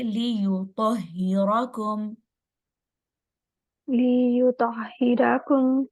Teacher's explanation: یا کے اوپر پیش ہے، ہونٹ گول ہوں گے